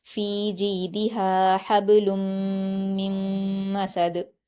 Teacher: لام پر تنوین ہے اور تنوین کے بعد میم آیا ہے تو ادغام یرملون کا قاعدہ ہوگا، لام کو میم سے ملا کر غنہ کے ساتھ پڑھا جائے گا